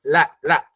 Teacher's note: kedua pinggir ujung lidah kita itu bertemu dengan gusi atas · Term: Huruf lam